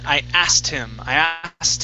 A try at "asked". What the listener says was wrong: Asked. With a T at the end.